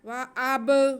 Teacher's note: بِسَمْعِهِمْ، وَأَبْصَارِهِمْ، واو پہ زبر، حمزہ پہ بھی زبر، اور با ساکن، با حروف قلقلہ میں سے ہے، حروف قلقلہ اگر ساکن ہوں تو ان کی آواز کو واضح کر کے جنبش دے کے پڑھتے ہیں۔